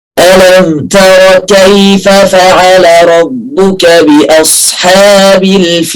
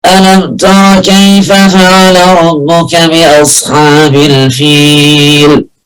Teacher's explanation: شفت مفيش هواء طالع من الخيشوم خالص، يبقى كده قراءتي صحيحة